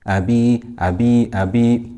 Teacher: We have here kasra, followed by ya sakina. So this is mad tabi'i. We stretch it for 2 harakat.